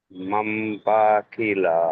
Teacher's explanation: নুন সাকিনের পরে বা এসছে, তাই নুন সাকিনকে মিম দ্বারা পরিবর্তন হয়ে যাবে, মাম। মাম। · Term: ইকলাব